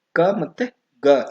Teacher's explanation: ಕ ಮತ್ತೆ ಗ ಎನ್ನುವವು ಕಂಠ ಧ್ವನಿಗಳು